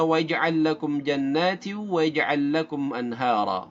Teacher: Dengungnya adalah dengung idgham karena bertemu dengan waw dan meleburnya naqis.